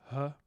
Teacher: we also have a glottal fricative this huh before the ah